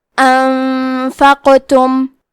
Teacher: کلمت انفقتم میں حرف القاف پہ جزم ہے تو یہاں قاف کا حکم ہے قلقلہ. قلقلہ کا معنی ہے حرف ساکن کو ہلانا تو ہم حرف القاف کو ہلاتے ہوئے یہ کلمہ کو پڑھیں گے